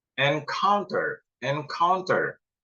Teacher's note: encounter encounter stresnya di tengah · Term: word stress